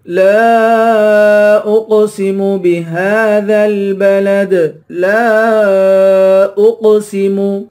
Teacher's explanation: لا الف کے اوپر مد ہے، اس مد کو 3 الف کے مقدار کھینچ کر پڑھیں گے۔ اقسم حمزہ کو قاف سے ملا کر قاف پہ قلقلہ کریں گے اور قاف کو پر پڑھیں گے۔